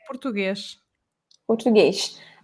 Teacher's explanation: nós transformamos em sh. Todas as palavras que terminam a sílaba em S.